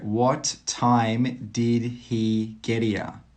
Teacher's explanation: 'Geddere' is how some native speakers say 'get here' very quickly.